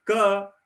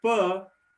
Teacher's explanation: if I say ka, the sound comes from my throat, right? If I say pa, the sound comes from my lips.